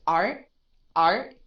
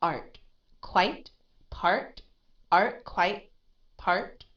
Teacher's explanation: because it's not aspirated it's at the end of the word